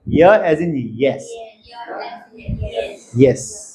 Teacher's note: The front of the tongue is the active articulator and the hard पैेट is the passive articulator.